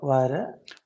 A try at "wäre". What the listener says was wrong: Not vara. This a umlaut, right? How do you say? You say air in English and just don't say the r part. Air. So this a umlaut, you say, yeah, vera.